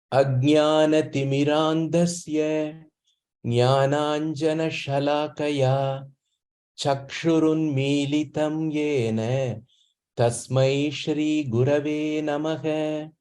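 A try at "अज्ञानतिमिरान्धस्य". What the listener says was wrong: Timirandhasya tatra mahapranasti mahapranasya uchcharanam kinchiteva adhikam spashtataya bhavet iti chintanam asti mama. Dhasya, dha. Mahapranasti, dha.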